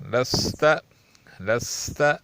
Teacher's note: سین سخت اور پتلی سیٹی جیسی آواز نکالنی چاہیے